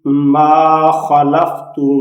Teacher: اب اس میں خا حروف مستعلیہ ہے، یہ پر پڑھا جائے گا